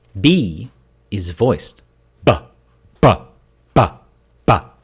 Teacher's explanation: where P is voiceless, P, P, P. B is voiced, B, B, B, B. Again, though, a bilabial stop.